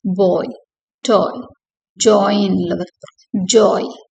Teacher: The diphthong oi starts with a mid-back rounded vowel and glides to a high front vowel, creating a distinct transition.